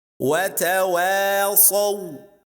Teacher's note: Please don't emphasize the sound of the waw that is before Saad